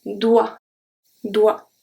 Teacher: remember that OE make the sound wa, like a W and an A